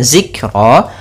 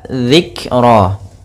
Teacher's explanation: di sini ada huruf dzal kecil, jangan sampai dibaca dengan zikra, tapi dia dzikra. Kemudian kafnya ini punya sifat namanya sifat hamas, yaitu aliran nafas kita atau jaroyanun nafas, maka zik.